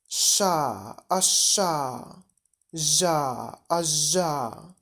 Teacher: Spółgłoski postalveolarne, zadziąsłowe, postalveolar, na styku języka i przedniej części podniebienia zadziąsłami.